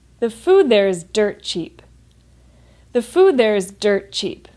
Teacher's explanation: when I say the food there is dirt cheap, that's a statement, so there's a falling intonation